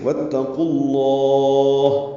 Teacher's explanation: واتقوا اللہ قاف بھی پر، لام بھی پر، اور لام کو لمبا کر دیں گے وقفاً کیونکہ ہا ساکن کر رہے ہیں اور اس پہ ہمس کریں گے